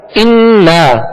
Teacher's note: غنہ کریں گے، ایک الف کی مقدار غنہ کریں گے